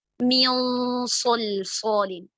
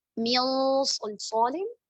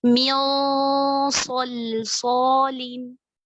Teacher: صاد کے مخرج کے قریب اور ساتھ میں ہم نے غنہ کو ہیوی کر دیا